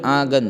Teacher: نون گننا والی آواز ہے نا، نون سے آواز نکل رہی ہے